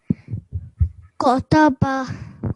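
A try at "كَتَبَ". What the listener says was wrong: So this calf is thin one. So it is, we pronounce this calf while like smiling face, widened our lips. Kataba.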